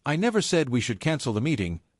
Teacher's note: Let's say you're talking about a project and you say, "I never said we should cancel the meeting." and stress never. You're completely denying it.